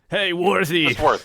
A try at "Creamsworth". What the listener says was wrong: Just worth. Not worthy, just worth.